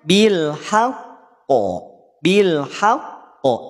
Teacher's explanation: pada saat huruf Qalqalah itu bertasdid Nah maka cara bunyikannya tidak langsung dipantulkan tapi ditekan Baru pantulkan tekan Baru pantulkan tekan dari mana tekan adanya tasdid adanya sabdu